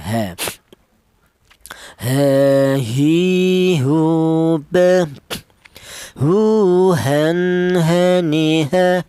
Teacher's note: huruf H ini keluarnya huruf berasal dari tenggorokan bagian bawah atau pangkal tenggorokan